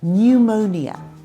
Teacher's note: I say nju – there’s a little y sound.